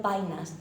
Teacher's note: ese cambio de la vocal e por a es muy habitual en la lengua en la lengua coloquial · es una apertura vocálica, ese cambio de la vocal E por A